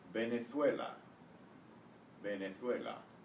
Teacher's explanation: the V is pronounced as a B in Spanish